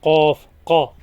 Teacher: अलग है ये एफ से अलग है इसे फ पढ़ेंगे कफ ये जबान की जड़ को तालू के नर्म हिस्से पे टच करने से अदा होता है ये काफ से लगे जैसे हम के पढ़ते हैं क से